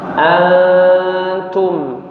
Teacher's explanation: Jadi nun sukun ketika bertemu dengan huruf ta dia samar-samar ya, jangan diizharkan